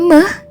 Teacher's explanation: lalu bunyinya sengau. Oleh karena itu, bunyi meh disebut sebagai bilabial nasal